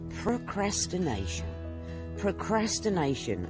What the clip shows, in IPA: prəʊˌkræs.tɪˈneɪ.ʃən